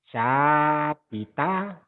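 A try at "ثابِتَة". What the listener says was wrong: Salahnya ujung lidah ya. Sabita. Nah gitu.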